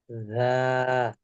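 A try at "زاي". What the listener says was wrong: জ্যা। লাগবে নিচে, নিচে, নিচের দাঁতের পেটের সাথে লাগবে। শক্ত হবে। পাতলা হয়ে যাচ্ছে, শক্ত করতে হবে।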